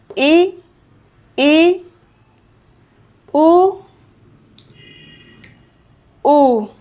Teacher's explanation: जिनके उच्चारण में मुख आधा खुलता है। जिनके उच्चारण में मुख लगभग बंद रहता है। आप बोल के देखिए इ उ मुख लगभग बंद रहता है।